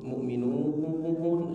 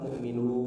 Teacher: mu'minun harus betul-betul dimajukan karena berharakat dhammah